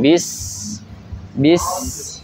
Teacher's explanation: huruf sin mempunyai sifat bainiyah apa rokhwah? Sifat rokhwah. Jadi dialirkan lebih panjang. Bis. Ya, jangan bismillahi.